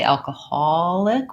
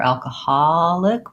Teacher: alcoholic with a little bit of rounding or alcoholic with an ah sound. This is definitely a word where those vowels have merged a little bit and both pronunciations are acceptable.